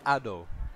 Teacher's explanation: starts with a vowel in the orthography, but we can see it actually has a glottal stop